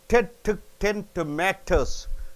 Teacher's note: It is a stressed syllable, right? See, when a T is at the top of a staircase in a stressed position, it should be a clear pop sound. In the beginning of a word, T is T.